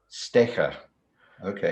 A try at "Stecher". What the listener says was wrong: Yes, more like a sh, like a you know, Stecher, Stecher.